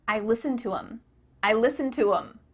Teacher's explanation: the word them has the th cut out